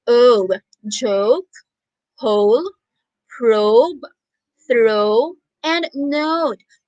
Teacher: when teacher pronounces the words with a long vowel O sound, her mouth also is rounded.